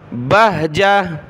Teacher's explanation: جب رکیں گے گولتا پر تو گولتا وقف میں ہا بن جائے گی